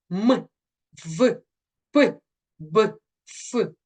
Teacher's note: такий вислів усе це кафе птах і чаши наступна група губні утворюється зближенням чи зімкненням нижньої губи або з верхньою губою або з верхніми зубами